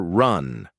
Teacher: The tongue curls slightly back without touching anything. Lips loosely rounded. No trill. No tap. No vibration. The sound comes from the shape of the raised curled tongue alone.